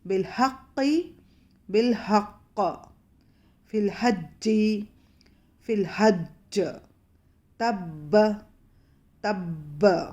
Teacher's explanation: قلقلہ کیسا ہوگا؟ بہت زبردست, بہت مضبوط قلقلہ ہوگا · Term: قلقلے اکبر